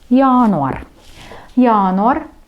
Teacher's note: и ударение на первый слог